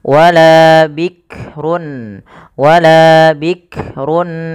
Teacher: bikrun ya hati-hati dalam melafalkan huruf Kaf tidak langsung bikrun Bik jangan sampai memantulkan huruf Kaf karena Kaf tidak punya sifat Qalqalah tapi wala bikrun wala bikrun awanum padafal Run ada bacaan izhar